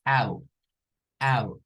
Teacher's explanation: como una A y una U, pero no es la U nuestra, porque la U es, nuestra no es U, esta es una U diferente. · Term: El diptongo OU